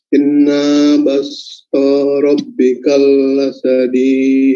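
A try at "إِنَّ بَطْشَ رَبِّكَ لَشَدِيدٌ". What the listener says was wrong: Inna, tahan lagi, tahan. Inna Tambah lagi. La syadid. Bagus kalau 4 harakat.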